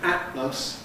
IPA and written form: ˈæʔləs (atlas)